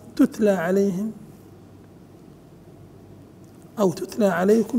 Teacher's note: تتلى عليهم او تتلى عليكم فكنتم بها تكذبون التاء وبعدها التاء التاء الاولى واضح مظهره والثانيه ساكنه مهموسه